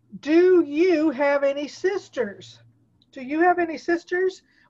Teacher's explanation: the word do often has a short weak pronunciation when another word comes after it